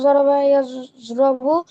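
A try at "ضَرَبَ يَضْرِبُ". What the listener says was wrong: তুমি এটা ভুল করতেছো শুধু, জরবা ইয়াজরবু বলতেছো।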